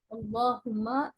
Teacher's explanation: कल तक तो बारीक पढ़ेंगे ला को मोटा पढ़ेंगे क्योंकि ल अल्लाह के लाम को मोटा पढ़ना चाहिए